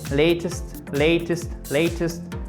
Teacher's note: Le T aussi, il a tendance à se transformer en D.